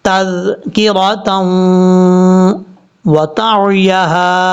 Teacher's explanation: تا کو واو سے ملاتے ہوئے یہاں پر غنہ کریں گے، یہ ادغام یرملون کا غنہ ہے